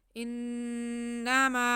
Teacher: ہم نون مشدد پہ ایک الف کے برابر غنہ کریں گے۔ ان آگے میم پہ زبر ہے اور ساتھ میں الف ہے، تو الف مدہ ہو گیا۔